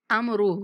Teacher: أَوَلَيْسَ الَّذِي خَلَقَ السَّمَاوَاتِ وَالْأَرْضَ بِقَادِرٍ عَلَىٰ أَن يَخْلُقَ مِثْلَهُم بَلَىٰ وَهُوَ الْخَلَّاقُ الْعَلِيمُ إِنَّمَا أَمْرُهُ، ان پہ غنہ کریں گے، میم کو 3 سیکنڈ تک لمبا کریں گے